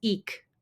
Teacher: Ik is aspirated, not ejective.